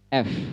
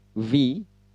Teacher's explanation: Kalau F, bibir bawahnya tidak bergetar.